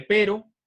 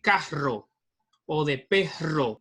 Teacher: vamos a tener un sonido que le vamos a llamar vibrante simple, que es la R de pero, y la vibrante múltiple, que es la R de carro o de perro